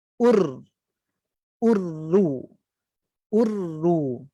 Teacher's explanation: Masa sebut u muncung, kemudian dikembalikan semula sebab nak letak makhraj ra tu hujung lidah diangkat saja.